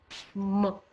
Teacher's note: When you pronounce m, it is bilabial. It is pronounced with the help of two lips